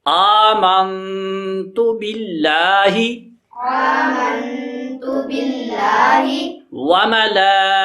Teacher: یہ لام پہ مد ہے، اس کو ہم 4 الف لمبا کریں گے۔